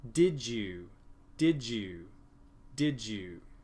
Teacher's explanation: with assimilation I have two sounds duh yeah that go together to make one new sound